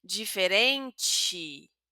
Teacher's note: la última e la vamos a pronunciar como una i, no una i fuerte, sino una i suave · Mira, como si hubiera una letra I, pero en verdad es una letra E.